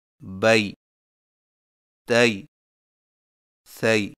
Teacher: یائے لین میں ہونٹوں کو اوپر کی طرف کھولنے کے فوراً بعد نیچے کی طرف جھکا کر نرمی سے بغیر کھینچے پڑھیں